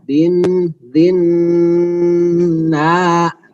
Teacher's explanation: ketika na itu langsung terlepas dari hidung. Na'imah ya, tidak ada yang masuk ke hidung lagi.